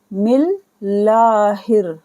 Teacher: यहाँ पर लफ्ज़ अल्लाह को बारीक पढ़ेंगे क्योंकि यहाँ नीचे ज़ेर है।